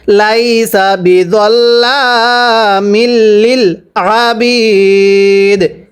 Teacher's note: আবারও পড়ব, ওয়া আন্নাল্লাহা লাইসা বিযাল্লামিল লিল আবিদ। ওয়াকফের সময় কলকলা করতে হবে, কারণ দালে যদি সাকিন হয় কলকলা করে পড়তে হয়, তাহলে ওয়াকফের কারণে দালে সাকিন দিয়ে পড়তে হবে, এজন্য কলকলা করব।